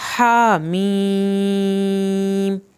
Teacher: ہا کو آپ نے حلق سے پڑھنا ہے، ہا کے اوپر کھڑی زبر ہے.